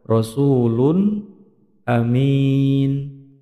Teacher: Bacaan idhar halqi, bacaan jelas di tenggorokan.